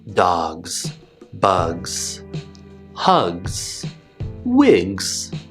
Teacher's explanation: when we're combining these two sounds you're going to be ending with the z sound so that one will be more pronounced whereas the g sound is going to get cut off · even though these words end in gs we're not going to make the s sound we're going to make the voiced z sound because is also voiced a voiced sound should follow another voice